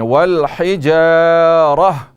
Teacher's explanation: یہ والحجارہ پہ جو آپ وقف کرتے ہیں تو اس کو لمبا نہ کریں